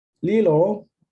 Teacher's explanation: the tongue taps the roof of the mouth